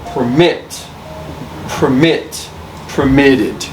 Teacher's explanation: The stress is not on per, it's on mit.